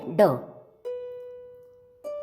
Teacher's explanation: ट वर्ग के इस तीसरे व्यंजन को भाषा विज्ञान की दृष्टि से मूर्धन्य स्पर्श घोष तथा अल्पप्राण ध्वनि का कहा है। थोड़ा भेद र का है।